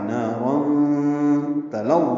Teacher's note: لام کو جلدی پڑھنا ہے، باریک پڑھنا ہے، وا سے ملانا ہے، وا پر پڑھنا ہے، اور 2 حرکات لمبا کرنا ہے. · نارا تلظیٰ میں نا الف مدہ ہے، 2 حرکات لمبا ہے. را پر ہے، تنوین ہے 2 زبر کی، اس لیے پر ہے، اور تنوین کے بعد تا آنے کی وجہ سے اخفا ہے.